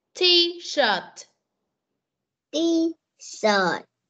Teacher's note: sờ cong lưỡi chứ không phải là chờ